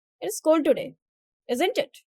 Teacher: Rising intonation if unsure about the weather.